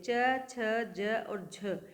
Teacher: स्पर्श के साथ संघर्ष या घर्षण भी हो रहा है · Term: स्पर्श संघर्षी व्यंजन